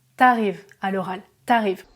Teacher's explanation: Si le verbe qui suit le mot tu commence par une voyelle, le U de tu disparaît. Par exemple, si je dis tu arrives, le A est une voyelle, en français, je vais dire t'arrives à l'oral.